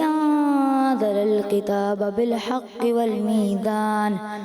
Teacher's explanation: انہوں نے دونوں جگہوں پر زا کی ادائیگی جو ہے انزل الکتاب اور والمیزان میں زا کو ذال پڑھا